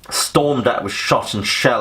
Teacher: we get the repetition of the sibilant S, which recreates the sound of shells and bullets flying over the heads of the soldiers